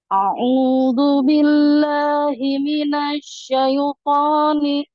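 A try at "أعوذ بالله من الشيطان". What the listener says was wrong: A'udzu billah. Kurang rendah sedikit. Terlalu tinggi. A'udzu billah.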